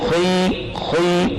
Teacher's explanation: خا کے اندر استعلاء کی صفت لازمی ہے, اگر اس پر زیر بھی آیا ہے پھر بھی خا کو موٹا پڑھیں گے. ایک ہے خی, یہ باریک ہے, ایک ہے خی, خی یہ موٹا ہے جی.